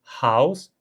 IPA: haws